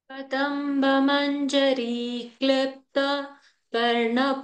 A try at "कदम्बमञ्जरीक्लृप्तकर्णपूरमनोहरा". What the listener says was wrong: One go. No stop after Klipta. Kadamba Manjari Klipta Karnapura Manohara.